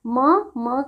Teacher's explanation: म का उच्चारण स्थान ओष्ठ प्लस नासिका। तो यह दोनों से होते हैं।